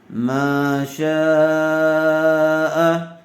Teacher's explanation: حمزہ یا زبر ای، یا زیری، فی ای، صاد و پیش صو، را زبر را، صورا، تامیم دو زیر تم، فی ای صورت، میم الف زبر ما، شین الف مد زبر شا، ما شاء، حمزہ زبر آ، ما شاء، حرف مدہ کے بعد حمزہ اسی کلمے میں آئی ہوئی ہے، اس لیے مد متصل کا قاعدہ ہوگا۔ شین کو کھینچ کر پڑھیں گے۔